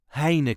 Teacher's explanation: you also hear me omitting the last n at the end of the word